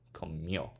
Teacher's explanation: It falls on the mio, so accent on the O.